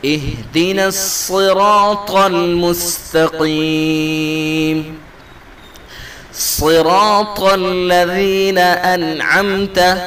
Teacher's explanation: صاد را الف طا چاروں حرف کو پر کر کے پڑھنا ہے، موٹا کر کے